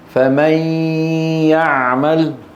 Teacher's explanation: عندما يأتي بعدها ياء مثل فمن يعمل، الذي يتحول إلى ياء هو النصف اللساني فقط، والجزء الخيشومي يبقى بل ونطوله. فلما نقول فمن النصف اللساني من النون تحول لياء، والنصف الخيشومي بقي، الغنة موجودة. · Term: الإدغام بغنة